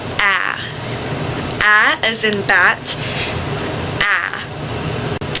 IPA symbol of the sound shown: æ